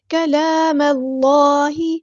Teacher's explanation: میم کو ہم نے لام کے ساتھ ملا دینا ہے، حمزۃ الوصل ہمارا ڈراپ ہو جائے گا ، اللہ کا لام ہم یہاں پہ پورا ادا کریں گے،